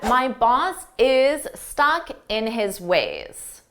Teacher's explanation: Notice how boss is, we say it as one word